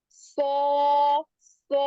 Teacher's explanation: hanya bervokal o, tidak, tapi hasil dari proses o itu dari pangkal lidah yang naik, sehingganya dia bervokal o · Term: huruf sod